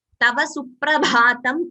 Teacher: Only bha is Mahaprana. The ta is not a Mahaprana. So it is not Suprabhatam.